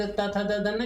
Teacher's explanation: अब त थ द ध न यानी त वर्ग, त वर्ग त थ द ध न, जब हम इसको बोलते हैं तो हमारी जीभ कहाँ सटती है, दांत के पास, इसलिए इसका उच्चारण स्थान क्या हो गया, दंत हो गया।